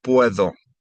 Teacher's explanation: Notice the D has kind of a TH sound, puedo.